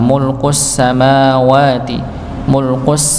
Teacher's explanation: Berikutnya mim dan wawunya dibaca dua dua harakat ya.